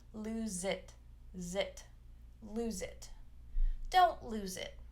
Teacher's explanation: if we have a vowel after we're going to link that z sound